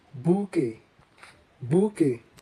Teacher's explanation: Bouquet, a bunch or collection of cut flowers, is of a French origin. In French, the QU is pronounced together as k, k, and the T is silent